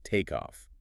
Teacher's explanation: That K sound has effectively moved over to start the next syllable. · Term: liaisons